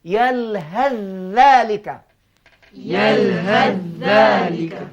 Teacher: Ini menurut riwayat hafaz dari tariq Syatibiyah, hendaklah sa ini dimasukkan ke dalam huruf zal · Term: idgham